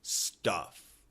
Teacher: The U. The short U is a sound that comes more from the back and it falls immediately out your mouth.